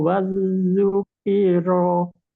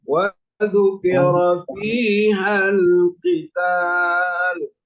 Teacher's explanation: Wadzukira, jangan wadzuk, jangan ada syiddah